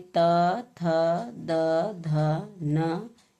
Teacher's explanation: त वर्ग त वर्ग में त, थ, द, ध, न इनका उच्चारण स्थान दंत्य है।